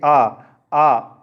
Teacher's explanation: जो विवृत स्वर है इसके उच्चारण के समय मुख प्राय खुला रहता है